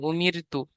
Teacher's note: রটা উচ্চারণ হওয়ার সময় মুখ গোল হবে না, এমনি স্বাভাবিক অবস্থা থাকবে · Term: বারিক